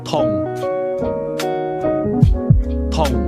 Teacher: Did you hear the midfalling tone?